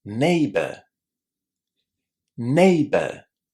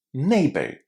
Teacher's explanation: In international English, we pronounce the letter R, but because my accent is British, in situations like these, I don't normally say the R.